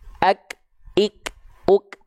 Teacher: melafalkan huruf Kaf kan dia punya sifat percikan nafas tapi kenapa sifat percikan nafasnya itu lebih terdengar ketika Kaf dalam kondisi sukun ak Ik UK berbeda halnya ketika dia berharakat terdengarnya lebih samar